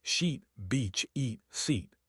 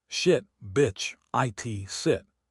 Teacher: When listening, listen for the length and the pitch. The long I is higher and longer. The short I is lower and quicker.